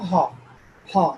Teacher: আমরা বাহ্যিক যে মুখ গহ্বর, এখানে কোথাও ধাক্কা না লাগলেও শুরুটাই হচ্ছে ধাক্কা থেকে, এই জন্য এটা ভাওয়েল নয়, হ সাউন্ড। এই একটাই হচ্ছে গ্লটাল সাউন্ড।